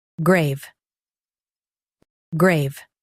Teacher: Stress gray and keep V clear.